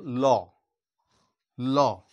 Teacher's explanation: দেখো ল ল এই যে ল টা ল টা তালুতে কিন্তু জিহবাটা স্পর্শ করছে কিন্তু শ্বাসবায়ুটা জিহবার দুপাশ দিয়ে পুরো বেরিয়েছে আসছে এইভাবে উচ্চারণ হচ্ছে শ্বাসবায়ুটা সেই রকম ভাবে কোথাও বাধা পাচ্ছে না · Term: পার্সিক ধ্বনি, পার্শ্বিক ধ্বনি